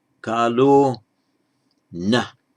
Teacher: kala becomes kalo before a word beginning with a voiced consonant